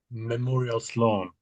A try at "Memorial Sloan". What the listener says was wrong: Yeah, that's it. Sloan. Yeah, you've got it spot on. No trouble whatsoever.